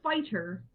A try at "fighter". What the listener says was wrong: All right, just so you know, it sounds like you're saying spider, like the thing with 8 legs. I heard spider, which is why I had you repeat it.